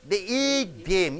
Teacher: Eat should be stressed more because it is a verb.